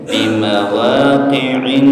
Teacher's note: nunnya ditahan, bacaan gunnah ya